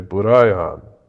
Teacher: there's not really a hard r sound in japanese right so it's going to sound strange when they say it